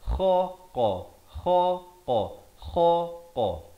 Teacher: Kha di sini hujung kerongkong. Qaf pula di pangkal lidah